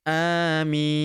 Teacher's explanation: Ketika sukun huruf terakhirnya ya, huruf terakhir dibaca sukun maka amin. Huruf minya kita panjangkan 4 sampai 6 harakat ya.